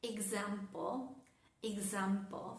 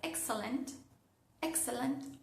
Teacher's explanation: Las palabras que empiezan con EX, pero que tienen su acento, la fuerza de la palabra en la sílaba siguiente, suenan Ga.